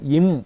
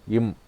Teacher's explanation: மேலுதடும் கீழுதடும் பொருந்த பிறந்தால் அது ஈரிதழ் ஒலிகள் என்று சொல்லுவோம். அப்ப பாருங்க, இம் என்று சொல்றப்ப எங்களுக்கு ரெண்டும் பொருந்த பிறக்கணும்.